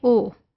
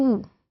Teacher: So जब आप कहते हैं बूट ऊ, completely आपके lips जो हैं वो round हैं. जब आप कहते हैं ओ, तो आपके जो lips हैं वो round हैं, but not to the extent जिसके लिए कि आपके ऊ के लिए थे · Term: rounding